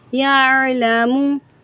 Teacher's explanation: حلق کے درمیانے حصے سے عین کا مخرج ہم پڑھیں گے